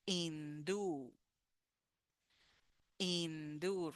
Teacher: we have the last sound u and it's with the stress